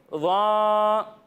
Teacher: اچھا بچوں آپ کو یہاں پر بتاتا چلوں کہ جب ہم ظا کی ادائیگی کریں گے تو اس میں سیٹی کی آواز نہیں آئے گی بلکہ اسے بغیر سیٹی کے پڑھیں گے ظا.